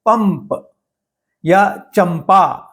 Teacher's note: ऐसा लगता है कि म आधा बोला गया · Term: अनुनासिक